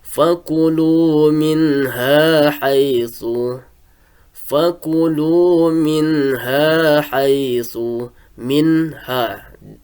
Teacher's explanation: Maka suara nun matinya itu dijelaskan apabila ada nun mati bertemu dengan huruf ha.